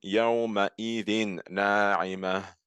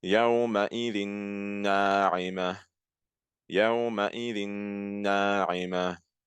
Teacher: So I'm mixing the tanween with the following letter, which is a noon. Why? Because the noon is one of the yarmanun letters. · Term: al-idgham